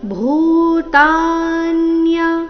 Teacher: ಭೂ ಮಹಾಪ್ರಾಣ ದೀರ್ಘ ಭೂತಾನ್ಯ